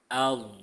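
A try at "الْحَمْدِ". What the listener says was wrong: Nah, jadi pertahankan dotnya jangan sampai jadi huruf dal. Di, nah itu dal. Aum, di, nah itu dal. Aum, dui, nah pakai dot. Aum, dui, dui.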